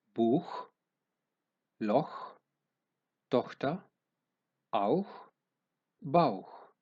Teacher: η γλώσσα έρχεται στο μαλακό τμήμα του ουρανίσκου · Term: υπεροϊκό